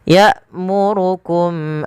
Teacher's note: pada mim mati bertemu hamzah ada izhar syafawi, dijelaskan suara mimnya.